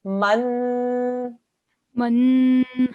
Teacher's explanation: It's a fathatain, which also makes a nasal sound.